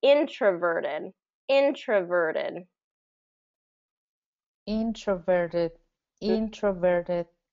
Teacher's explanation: so there's actually kind of two two syllables that are stress the first one is getting the primary stress the third is getting the um secondary stress